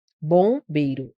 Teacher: Fica nasal. Eu tenho um dígrafo vocálico aí.